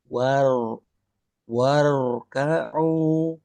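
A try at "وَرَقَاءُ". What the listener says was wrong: Nah, kurang tarkik aja. Tebalnya sudah lumayan. Waro, waro, gitu. Waroka'u.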